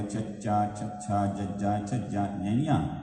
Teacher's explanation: ਜਿੱਦਾਂ ਇਸ ਤੋਂ ਅੱਗੇ ਚੱਚੇ ਵਾਲੀ ਲਾਈਨ ਦੇਖ ਲਓ, ਚੱਚਾ, ਛੱਛਾ, ਜੱਜਾ, ਝੱਜਾ, ñਈਆਂ। ਤੇ ਜੀਭ ਦਾ ਵਿਚਕਾਰਲਾ ਹਿੱਸਾ ਉੱਪਰ ਉੱਠ ਕੇ ਦੰਦਾਂ ਦੇ ਉੱਪਰਲੇ ਪਾਸੇ ਬੈਕ ਸਾਈਡ ਦੇ ਉੱਪਰ ਜਿਹੜਾ ਮਾਸ ਹੈ ਤਾਲੂਏ ਦਾ ਪਹਿਲਾ ਭਾਗ, ਉਹਦੇ ਉੱਤੇ ਟੱਚ ਹੋਏਗਾ।